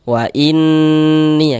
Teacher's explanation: di bagian inn-nya suaranya itu kita tahan kita panjangkan sejenak.